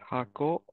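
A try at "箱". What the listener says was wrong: Hako. Perfect.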